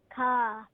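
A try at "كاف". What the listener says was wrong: No, not ka. Kaf.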